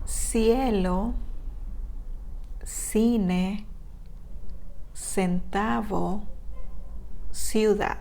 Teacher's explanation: When is followed by E or E in Spanish. It sounds like the S in the most Spanish-speaking countries. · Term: soft C